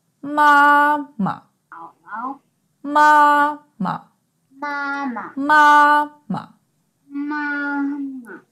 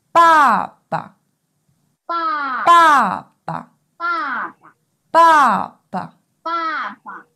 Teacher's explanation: Generally, the neutral tone sounds shorter and softer.